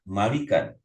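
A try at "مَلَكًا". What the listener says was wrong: Malakan. Beda. Malik dan malak beda.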